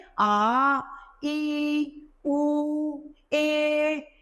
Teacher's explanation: जिनके उच्चारण में हमें हस्व स्वर से अधिक समय लगता है वे दीर्घ स्वर कहलाते हैं